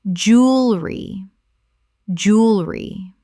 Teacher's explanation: Only two syllables in natural British English speech.